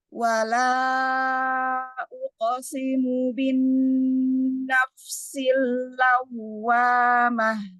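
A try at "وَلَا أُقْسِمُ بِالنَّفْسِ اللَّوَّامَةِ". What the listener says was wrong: Mi masih baca fa-nya itu jadi kayak kalau Indonesia itu huruf P ya, tidak F. Bukan naf. Jadi bukan naf, tapi naf. Kayak niup. Ya, naf. Bin nafsilawa. Bin nafsilawa. Wawnya nabar waw tasdid.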